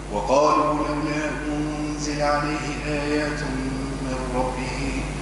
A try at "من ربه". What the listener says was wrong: من ربه، نقف على السكون، ما قولش من ربه، من ربه، قف على السكون. من